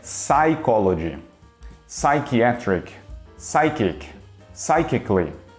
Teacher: Já no inglês é melhor você esquecer que esse P existe, porque a pronúncia correta é psychology, psychiatric, psychic, psychically e etc. A gente não fala o P, começa direto no S.